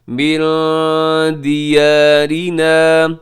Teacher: نون ساکن کی بعد دال یہاں اخفا کیجیے گا